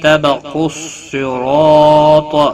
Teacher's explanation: قاف حروف مستعلیہ میں سے ہے، پر پڑا جائے گا۔ صاد بھی حروف مستعلیہ میں سے ہے، پر پڑا جائے گا۔ · صاد بھی حروف مستعلیہ میں سے ہے، پر پڑا جائے گا۔ را زبر کی وجہ سے پر پڑا جائے گا۔ الف مدہ بھی ہے، را 1 الف کے برابر کھینچ کر پڑھیں گے۔